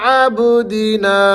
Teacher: عبدنا با حروف قلقلہ میں سے، یہاں پر آپ نے جنبش پیدا کرنی ہے۔ عبدنا، نا کو آپ نے کھینچنا ہے، اس کے آگے الف مد آ رہی ہے۔